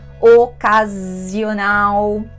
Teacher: pronúncia de S entre 2 vogais, o som é bem vibrante. Z.